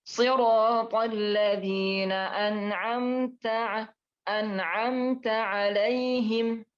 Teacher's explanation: Ingat huruf ta ya, jangan terlalu banyak hamas, maka akan menjadikan fatal.